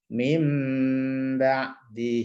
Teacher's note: ini mengganti suara Nun diganti dengan suara mim itu iqlab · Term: iklab